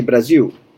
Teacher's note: many Brazilians, they can't pronounce the L at the end. Brazil, they say Brasil.